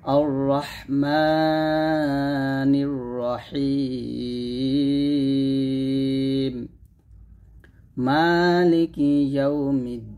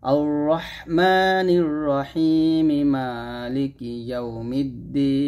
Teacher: এখানে রহিমি জায়গায় আমি বলতেছি রহিম আর দ্বীনের জায়গায় বলতেছি দ্বীন